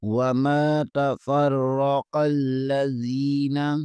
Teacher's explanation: قاف کو لام کے ساتھ ملائیں گے، قاف کو بھی پر پڑھیں گے اور لام کو بریک پڑھیں گے۔